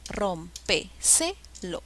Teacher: Rómpeselo lleva la mayor fuerza de voz en la sílaba rom. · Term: sobresdrújula